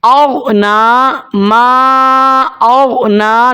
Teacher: نون کے اوپر کھڑی زبر ہے، 1 الف تک اس کو لمبا کیا جائے گا